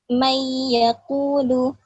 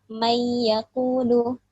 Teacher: Jadi ya-nya itu yang seakan-akan bertasydid gitu. Jadi kan mayyaqulu. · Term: idgham bigunnah